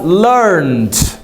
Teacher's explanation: Eu pronuncio o som do ED com som de D.